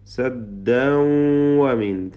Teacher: തൻവീനിനെ ഇത് ഗംബിഗുന്ന വാവിലേക്ക് ഭാഗികമായി ലയിപ്പിച്ച് മണിക്കുക